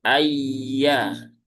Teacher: huruf ya dia ada di tengah lidah langit-langit atas